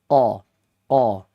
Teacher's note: K di situ huruf istila'la fanya istifal kho faqo ma qo bukan ko mako bukan mao qo dia maudiul lisaninya tempat keluarnya ya ada di pangkal lidah oo ka ya lidah yang paling dalam qo qo ada maju sedikit itu namanya ka ya qo ka o ka.